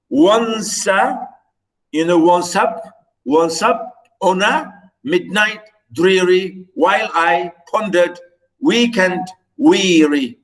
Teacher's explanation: That is 8 lines of trochees, pairs of syllables. The first one is stress and the second one is unstress. All these verses, all this poem is written in the same form, trochaic meter.